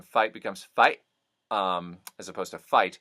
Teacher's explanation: there's a closing of the throat or of the sound when confronted with, in this case, a T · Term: glottal stops